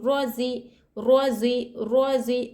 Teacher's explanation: رو کے اوپر حرکت زبر پیش رہا تو رو موٹی ہوگی، رو کو موٹا پڑھیں گے